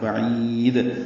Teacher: عین وسط حلق سے ادا کریں گے اور عین کو لمبا کریں گے، دال ساکن پہ قلقلہ ہوگا